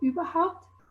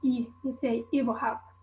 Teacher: vowels, so for example in standard german you'd say "überhaupt", whereas in south tyrolean the /y/ is unrounded , and it becomes "ibrhaupt", and another feature is that we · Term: unround vowels